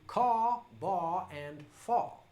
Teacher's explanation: for someone who speaks with a traditional Southern drawl, that would be caw, bar, and fa, non-rhotic